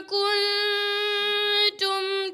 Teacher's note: the kuntum started like kultum. There's mixed the noon with the lam.